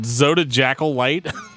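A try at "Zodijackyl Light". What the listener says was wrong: No, Zodiacal. The J is not a J sound.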